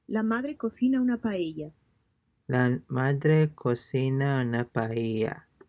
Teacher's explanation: Be sure that the pitch of your voice falls at the end. Pitch of your voice falls at the end.